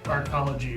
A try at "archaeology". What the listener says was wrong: Archaeology. There's an extra syllable there.